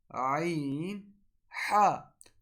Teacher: ہمارے گلے کا وہ حصہ جو کہ درمیان میں ہوتا ہے، اس سے عین اور حا ادا ہوتے ہیں